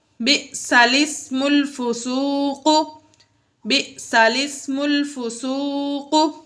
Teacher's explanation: اس کلمے میں لام سے پہلے اور لام کے بعد دونوں الف نہ پڑھیں، بلکہ لام کو زیر دے کر پڑھیں۔ یہ لام ہے، اس سے پہلے اور بعد میں الف آ رہا ہے، ان دونوں کو نہیں پڑھنا۔